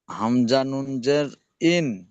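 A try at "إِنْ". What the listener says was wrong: ইন গুণনা করেন, আওয়াজটি নাকে তুলে কিছুক্ষণ ধরে থাকতে হবে। হামজা নুন জের ইন, ই টান হয়ে যাচ্ছে, ইন।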